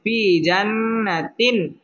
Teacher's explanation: হরফ এক আলিফ টেনে পড়তে হবে ফি জান্না ওয়াজিব গুন্না হলো হরকতের বামে নুন অথবা মিমের মধ্যে যদি তাসদীদ হয় ওইটাকে ওয়াজিব গুন্না বলে এখানে গুন্নাহ করে পড়তে হবে ফি জান্নাতিন তিন এটা হচ্ছে তানবিনের বামে আইন আসছে আইন ইজহারের